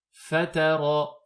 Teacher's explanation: Donc al-shafatayn, ce sont les lèvres, et elles comprennent deux makhraj. Il y a l'intérieur de la lèvre inférieure, qui s'appuie contre la pointe des incisives centrales supérieures pour former le point d'articulation de la lettre fa